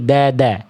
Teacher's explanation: huruf dal itu tidak boleh keluar percikan nafas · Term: Jahr